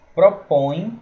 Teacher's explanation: propõe a gente vai ver aí que vai ser um ditongo nasal decrescente porque põe ele desse ontem propõe número três certo eu não